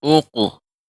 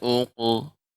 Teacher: Ini qaf qalqalah pada huruf qaf ya, ini tebal.